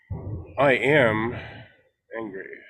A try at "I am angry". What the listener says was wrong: So you can say, I am angry. Cut the word a little shorter. Don't live in it.